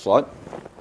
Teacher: Sod itu keluaran anginnya, hamasnya bukan di depan tetapi di geraham kiri atau kanan. Sehingganya waktu kita membaca sod, pipi kita sedikit bergerak.